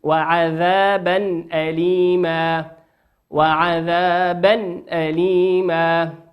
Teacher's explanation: تنوين في كلمة عذابا أتى بعدها حرف الهمزة والهمزة من حروف الإظهار تظهر كما هي